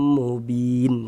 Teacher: bin dibaca panjang ini namanya adalah mad al sukun